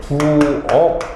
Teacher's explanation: 키 같은 경우가 받침으로 왔을 때 대표로 기억으로 바뀌죠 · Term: 음절의 끝소리 규칙